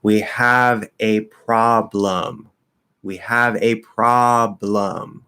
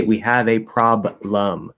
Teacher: that b and the l is going to be together because they're a cluster